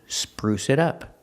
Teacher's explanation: the T in it changes to a fast D